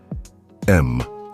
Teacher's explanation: a gentle humming m sound made with the lips lightly closed · The vibration moves from the throat up into the head, buzzing behind your teeth in your nasal passages and at the point between your eyebrows, often called the third eye.